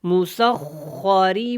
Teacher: خا کو موٹا پڑا، را کے نیچے زیر ہے تو را باریک ہوگی۔